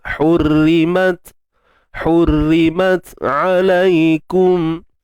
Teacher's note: Untuk ta kita tahan suara dulu, mat, kemudian baru lepaskan nafas.